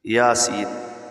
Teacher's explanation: یا کے اوپر کھڑا زبر ہے اور سین کو باریک سیٹی کے ساتھ پڑھنا ہے